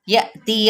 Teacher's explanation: حمزہ ساکنہ پہ جھٹکا